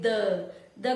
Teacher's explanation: द का उच्चारण करोगे तो जीभ किस भाग को स्पर्श करती है? दांत को स्पर्श करती है।